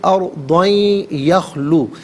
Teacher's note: تنوین سے یخلو کی یا کے ساتھ ملائیں گے اور یا کی آواز کو غننے کے ساتھ ادا کریں گے. یہاں یربلون کا جو قاعدہ ہے وہ اپلائی کیا جائے گا.